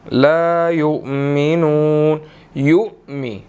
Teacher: حمزہ ساکن ہے تو یہاں پر جھٹکا دے کر اس کو پڑھیں گے